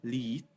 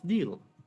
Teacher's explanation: The L at the beginning of lead versus The Dark l at the end of Deal